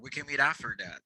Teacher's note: my t becomes r sound in this case